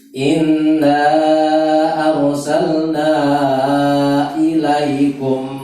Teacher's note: karena arsalnanya panjang, maka setelah itu hamzah ya, mat jaiz munfasil